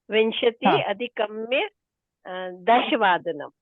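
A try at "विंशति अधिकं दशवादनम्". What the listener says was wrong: अधिकम्य न अधिकम्।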